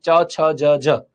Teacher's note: એ તમારા ઉપરના તાળવે અડે છે એટલે તાલવ્ય